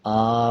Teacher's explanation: اب اس کو حمزہ کھڑا زبر آ پڑھا جائے گا اور 1 سیکنڈ لمبا کیا جائے گا